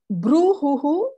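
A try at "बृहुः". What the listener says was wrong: Bruhu. Bruhu. Bruhu. Correct.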